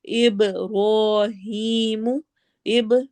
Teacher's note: बा पे हम कलकला करेंगे